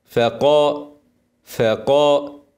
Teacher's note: ده ما نفصل لو وقفنا هنسكن الهاء ونايه ونبينها ونوضح الهمس ارقق الفاء قبل القاف